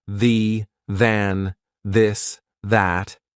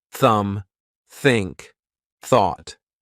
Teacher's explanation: the unvoiced th sound, which means our vocal cords are not going to vibrate.